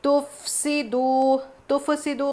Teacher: تفسدو قلقلہ نہیں کرنا، تفسدو، واو مدہ ہے کھینچ کے پڑھیں گے۔